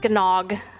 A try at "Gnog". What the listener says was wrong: I think it's just Nog. The G is silent. The Gnog has a silent G.